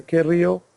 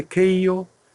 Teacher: r comes in at the expense of the diphthong sound